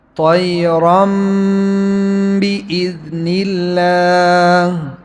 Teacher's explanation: نون تنوین اور ساکن کے بعد کیا آ جائے، با آ جائے تو یہ نون میم بن جاتا ہے